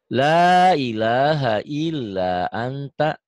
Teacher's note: Jangan angta, annya biasa aja, ifanya sedikit. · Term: ikhfa